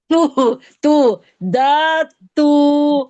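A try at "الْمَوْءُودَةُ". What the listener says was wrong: दाल को खींचना है, दा तू बोलना है। क्या, दोबारा बोले, दा। खींचना है मतलब इसको। खींचना है इसको, जबर वाले को।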